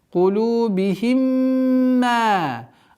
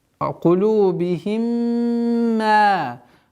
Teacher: Здесь ассимиляция в размере двух огласовок полноценной назализации.